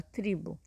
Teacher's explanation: nós temos a tendência de falar o u no final ao invés de falar o o